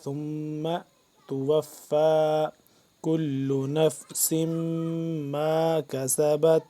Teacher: ثم تھا کو نرمی سے پڑھیں گے، میم مشدد پہ غنہ کریں گے